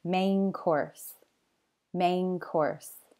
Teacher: sometimes an N sound at the end of a word changes to an ng sound when the following word starts with a k or g sound